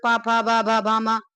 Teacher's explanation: होष्ठ, होष्ठ क्या, दोनों होंठों के स्पर्श से बोले जाने वाले